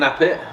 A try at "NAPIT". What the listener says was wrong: Napit. nay pit. It's not nah. N-A is nay.